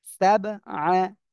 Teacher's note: আল্লাযী, এখানে এক আলিফ টান, খলাক সাবআ, সাব কলকলা হবে, কফ তো বা জিম দাল এই পাঁচটা অক্ষরের একটা অক্ষর সাকিন এখানে আসছে বা, তাই আমরা কি করব, ধাক্কা দিয়ে পড়ব।